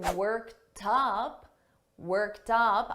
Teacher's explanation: I'm going to link these together and you're going to hear that t in front of up